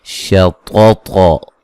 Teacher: ये ता दोनों ताओं को मोटा अदा करेंगे